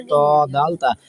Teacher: জিব্বার আগা সামনে উপরে দুই দাঁতের গোড়ার সঙ্গে লাগে